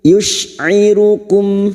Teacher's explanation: mim sukun bertemu hamzah idhar syafawi, mim sukun dibaca jelas tanpa mendengung